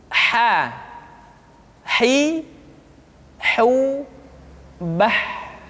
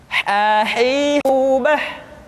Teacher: Huruf ha dikeluarkan dari tengah-tengah tenggorokan.